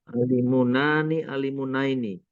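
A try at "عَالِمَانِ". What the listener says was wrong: Alimun, tambahkan alif dan nun. Alimani. alimaini. kan munnya tanwin. Alimun. Tanwinnya jadikan patah. Alimani.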